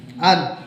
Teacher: نون ساکن ہے اور حروف حلقی میں سے کوئی حرف نہیں ہے، اس لیے ہم یہاں پہ غنہ کریں گے